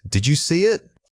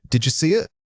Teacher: The did you almost always links together into a single breathy unit. Try to pull those two words into one continuous motion. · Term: Natural linkage